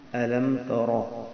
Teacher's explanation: را کو پر کریں گے، زبان کو تھوڑا سا گول، منہ کو گول کریں گے اور بھاری پکڑ کے پڑھیں گے